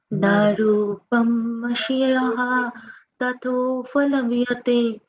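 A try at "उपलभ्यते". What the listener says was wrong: Palabhyate, not phal, palabhyate. palabhyate.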